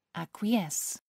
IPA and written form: ˌækwɪˈɛs (acquiesce)